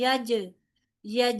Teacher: जीम साकिन है यहां पर भी कलकला होगा लिहाजा झटके से अदायगी होगी